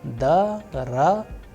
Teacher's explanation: the sound of other vowels which are not under stress would change into A